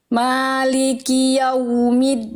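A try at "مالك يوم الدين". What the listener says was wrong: clear banget Bagus lanjut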